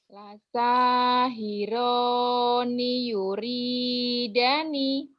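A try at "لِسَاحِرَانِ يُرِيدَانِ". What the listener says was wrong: Danya panjang, Mi.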